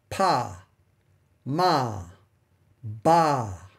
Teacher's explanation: any sound that's made with the two lips pressed together those are called bilabial sounds